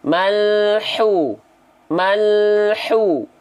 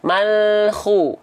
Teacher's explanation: keluarnya dari tengah tenggorokan Tengah tenggorokan dan karakteristik nafasnya berbisik ya